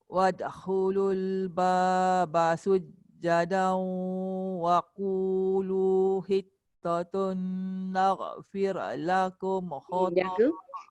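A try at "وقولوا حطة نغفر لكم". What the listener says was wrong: Jaga dekat ra. Jaga dekat ghain. Jangan ada bunyi qalqalah naghfir. Dia tak ada qalqalah tu. Ghain tak ada qalqalah. Ra pun tak ada qalqalah. Naghfir. Naghfir.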